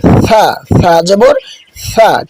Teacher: সা কিন্তু জিহ্বার আগা থেকে উচ্চারণ হবে। জিহ্বার আগাটা সামনের উপরের বা নিচের যে দুটি দাঁত আছে এই দাঁতের আগার সাথে লাগিয়ে হালকা বাতাস বেরিয়ে উচ্চারণ করতে হবে।